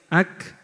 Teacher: Yang kedua ada yang suaranya tertahan nafasnya keluar seperti huruf kaf, ak ini saat sukun ya. Ak suaranya tertahan tetapi nafasnya keluar.